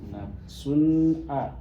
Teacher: cara bacanya jelas nafsun a enggak mendengung enggak samar